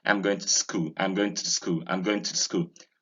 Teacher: It can be weak because it's a preposition, and when it's weak, you don't have to realize the oo as it should be